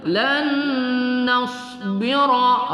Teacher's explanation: Lan nasbira ra ya, kita tebalkan, kita tafkhimkan ra berbaris fathah berbaris di atas.